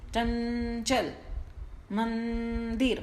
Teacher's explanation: म बोलने के बाद ये जो न वाली साउंड आ रही है, ये नाक से आ रही है, नासिक की ध्वनि है ये। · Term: अनुस्वार